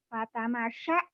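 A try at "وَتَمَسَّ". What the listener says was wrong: Watamasya. Bukan fa ya. Watamasya. Wow sama fa. Jangan keteker.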